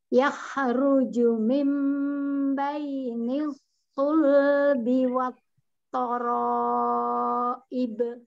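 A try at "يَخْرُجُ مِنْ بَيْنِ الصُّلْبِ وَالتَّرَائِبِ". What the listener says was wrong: Kho punya rokhoah, alirkan suaranya. Kho juga punya sifat hames, mengalir nafasnya. Jadi jangan memantul. Alirkan.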